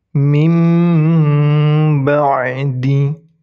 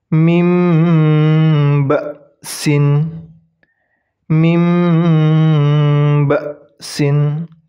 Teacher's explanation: Jadi hukum bacaannya itu hukum bacaan iqlab. Jadi ketika nun mati bertemu huruf ba, nun matinya itu diabaikan, kemudian diganti dengan huruf mim.